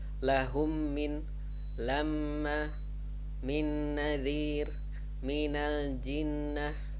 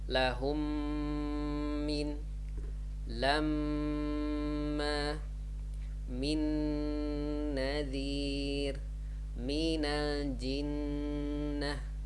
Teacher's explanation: Don't forget to hold the Meem and Nun with Shaddah with 2 counts. So maybe if you don't know, for some people who don't know Tajweed, they would read like as if they skip the Gunnah, like lahum min lamma min nadir min al jinnah.